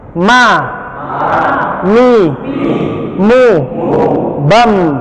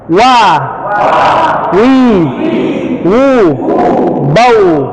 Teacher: kalau mim dan ba nempel, kalau wa tidak nempel, dia hanya digerakkan. Jadi kalau menyebutkan huruf wa, wau, mohon bibirnya digoyang, Pak.